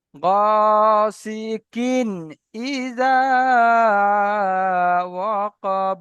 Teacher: এই তানবিনের আওয়াজকে বিনা গুণনায় জাহির করে পড়তে হবে, একে বলা হয় ইজাহার।